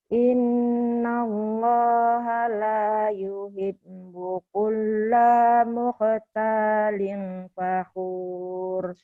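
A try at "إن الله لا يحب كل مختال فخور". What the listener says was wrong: Tuh, kenapa kulanya panjang ya?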